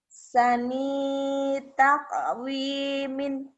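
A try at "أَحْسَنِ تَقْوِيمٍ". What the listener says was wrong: Kan ninya nggak ada yang manjangin.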